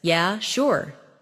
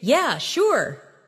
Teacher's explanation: if someone says, Yeah, sure, in a flat tone, it might mean they're not really interested.